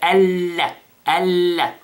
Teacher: So the noon basically is hidden, okay, and we pronounce the lam with shadda